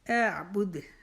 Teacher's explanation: دال کے اوپر قلقلہ کریں گے کیونکہ دال جو ہے وہ وقت سے پہلے آخری حرف آ جائے، حروف قلقلہ میں سے قاف تا با جیم دال، تو اس کے اوپر اپنی آواز کو پلٹایا جاتا ہے۔